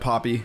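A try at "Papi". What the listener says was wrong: Poppy. Whenever you say it, it sounds like P-O-P-P-Y. Poppy seeds.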